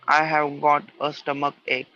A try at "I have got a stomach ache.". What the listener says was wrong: Ache. That's very good. Correct pronunciation.